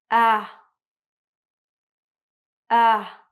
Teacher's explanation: So your tongue is very low in your mouth. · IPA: /æ/